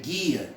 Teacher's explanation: Nesse caso, eu não pronuncio o U, né? Eu não pronuncio o U. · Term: dígrafo